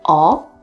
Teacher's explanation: Other than showing indifference, it could actually show interest. In this case, it is said with the second rising tone.